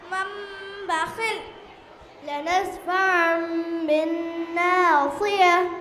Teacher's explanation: تنوین یا نون ساکن کے بعد با آئے تو نون کو میم سے بدل کر غنے اور اخفاء کے ساتھ پڑھیں گے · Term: اقلاب